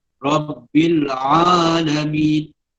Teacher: Ain adalah huruf halqi, huruf yang keluar dari halqum. Jadi kita orang Ajam, orang Melayu taklah kata selengkapnya menyebut huruf ain, tidak seperti orang Arab.